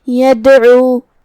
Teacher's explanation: عین کی ادائیگی حلق کے درمیان والے حصے سے ہے، جو کہ اس پہ پیش ہے تو ہمیں عین کو پیش سے ادا کرنا ہے اور اسے ظاہر کرنا ہے. · کلمت یدعو میں یہاں دال پہ جزم ہے تو یہاں دال کا حکم ہے قلقلہ. قلقلہ کا معنی ہے حرف ساکن کو ہلانا، لہذا ہمیں دال کو ہلاتے ہوئے یہ کلمہ کو ادا کرنا ہے